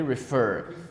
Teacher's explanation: The stress is on the last syllable.